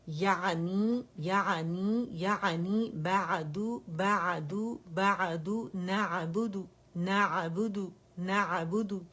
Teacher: عین وسط الحلق سے یہ ادا ہوتا ہے